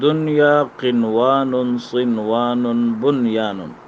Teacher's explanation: ان چاروں کلمات میں غنہ نہیں ہے بلکہ اظہار مطلق ہے، یعنی اس میں اظہار کیا جائے گا.